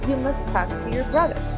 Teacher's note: Here we are going to geminate the letter T.